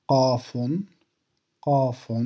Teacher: Cette lettre n'a pas d'équivalent de prononciation en français. Elle se prononce en haut de la gorge.